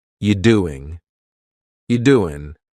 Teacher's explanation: we're going to start this question with just you, which is reduced to yi.